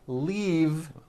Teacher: keep the voicing going throughout the whole word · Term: voiced Vape